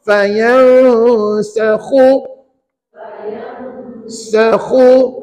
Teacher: Khu tu betulkan. Kha ni sebutannya atas kerongkong.